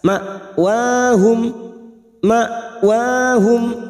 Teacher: Ulaika ma'wahum, ikama hamzah sukun, jangan samakan dengan ain. Hamzah sukun sifatnya siddah, harus dibaca jelas.